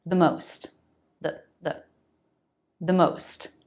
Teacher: In a sentence, it will become the the very fast with a schwa. This is when the next word begins with a consonant.